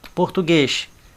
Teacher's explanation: Essa não tem segredo porque tem um acento circunflexo aqui. Então a sílaba tônica de português é o guês